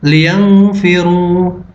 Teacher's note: Nun mati dibaca samar. Hukumnya adalah ikhfa. Alasannya, karena nun mati bertemu dengan fa.